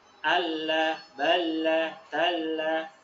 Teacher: kita tidak boleh menahan di tasydidnya. Allah, jadi tidak lama ditahan. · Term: lam alif yang bertasydid